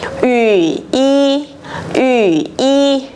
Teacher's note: chúng ta sẽ không đọc là ủy y, không đọc cả như vậy nữa mà sẽ đọc nửa thanh 3 thôi